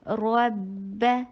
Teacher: را کو ہیوی کرنا ہے، با کو اوپر شدت کے ساتھ اس کو روک کے